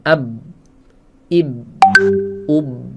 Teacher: Saat ab. Apakah ada nafas yang mengalir? Tidak. Nah, disitulah jaharnya.